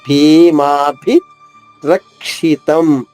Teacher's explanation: భీమాభి రెండు మహాప్రాణి భాలు ఇకారంతో ఒకటి దీర్ఘంగా ఒకటి హరస్వంగా